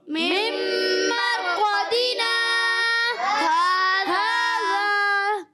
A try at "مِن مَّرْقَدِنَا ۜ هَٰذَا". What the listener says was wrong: تھوڑا سا رکنا ہے اتنا زیادہ نہیں رکنا ٹھیک ہے اچھا توجہ ہوگی نا آپ صحیح سمجھ جائیں گے من مرقدنا هذا